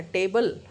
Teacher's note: इसमें ई जो है वो म्यूट है, ई साइलेंट है, ई का साउंड नहीं हो रहा है